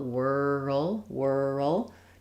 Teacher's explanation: Try to have a little bit of an uh sound before your l